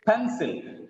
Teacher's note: The stress is on first syllable.